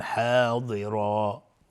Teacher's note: ضاد از حروف استعلاء غلیظ تلفظ میشه